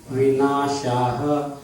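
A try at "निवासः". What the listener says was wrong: You reverse 2 syllables.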